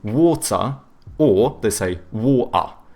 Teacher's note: they do a schwa instead of pronouncing the R